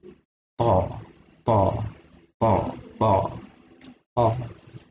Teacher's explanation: ada angin dikit di situ, ada dorongan angin di huruf itu, jadi kayak terpental dia.